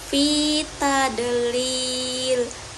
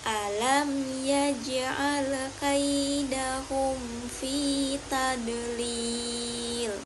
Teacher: Bisa dibaca 5 harokat atau 4 harokat. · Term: mat arid li sukun